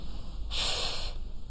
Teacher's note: there's no vibration. It is silent here. The vocal cords are not vibrating. So we call this an unvoiced sound. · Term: unvoiced consonant